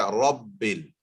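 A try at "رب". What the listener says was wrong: Don't get your lips involved too much.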